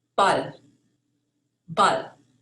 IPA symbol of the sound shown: bal